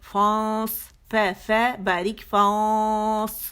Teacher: غنہ موٹا ہوگا, اخفا حقیقی جو ہے وہ موٹا ہوگا, کیوں کہ صاد صاد یہ جو ہے موٹا لیٹر ہے. ٹھیک ہے, تو کیونکہ یہ اخفا کاز کر رہا ہے تو اس وجہ سے غنہ ہمارا موٹا ہوگا.